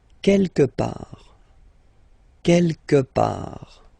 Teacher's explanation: Don't pronounce the final T.